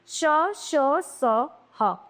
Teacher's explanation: उष्म व्यंजन। इन व्यंजनों के उच्चारण में वायु तेज गति से मुंह के भागों से रगड़ खाती हुई बाहर निकलती है जिसमें ऊष्मा उत्पन्न होती है। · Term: ऊष्म व्यंजन